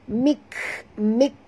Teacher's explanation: Sikit je bunyi angin dia. Itu namanya hamas.